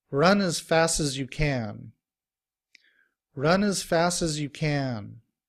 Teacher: And when combined with the words run and fast, it sounds like runners. And fast, we drop the T sound and combined with uz, sounds like fasses.